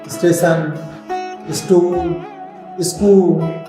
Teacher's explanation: अनेक लोग इसका उच्चारण ई जोड़कर करते हैं